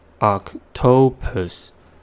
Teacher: And C says K because it's followed by T, not E-I-O-Y. And the vowel in the second syllable reduced to the first schwa sounds because it's in the unstressed syllable